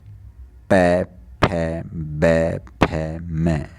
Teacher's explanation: इनके अंदर होठ बिल्कुल आपस में मिल जाते हैं इसका उच्चारण करते हुए। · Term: ओष्ठ